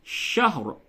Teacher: حالت وقف میں شہر، را کو پر بھی کرنا ہے اور ہا کو ساکن کرنا ہے، را کو ساکن کرنا ہے. شہر بالکل نہ بولیں.